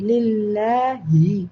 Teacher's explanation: ലാമിനെ താഴ്ത്തി ഉച്ചരിക്കാൻ കാരണം അള്ളാന് തൊട്ടുമുമ്പ് ലാം വന്നിട്ടുണ്ട് അതിന് കസറാണ്